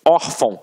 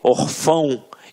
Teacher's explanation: a sílaba tônica está na penúltima sílaba. Por isso é uma paroxítona.